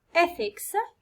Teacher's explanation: يعني stress يجي في السيليبل الأول اللي هو ethics